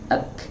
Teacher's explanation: sifat syiddah dengan sifat hams ini diucapkan bergantian. Ya, syiddah duluan baru dia hams